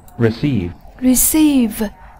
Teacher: Nhấn âm tiết số 2